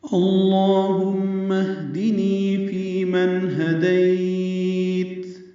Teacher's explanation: میم مشدد پہ غنہ کریں گے، میم کو ہاتھ سے ملا دینا ہے.